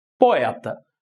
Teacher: se analisarmos a sílaba mais forte da palavra poeta, vamos reparar que o E tem um som mais forte do que o O